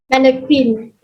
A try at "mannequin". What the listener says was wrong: Yeah, it's not Quinn. It's just kin. K-I-N. Mannequin. A mannequin.